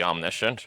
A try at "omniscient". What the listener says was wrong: Omniscient. It almost sounds like omen crap, the way you pronounced it.